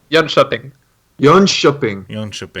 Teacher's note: So the K is like a sh sound.